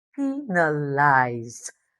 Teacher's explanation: You might see s as a letter but the sound is z. You feel the vibration of the vocal cords and that's why the ED becomes d.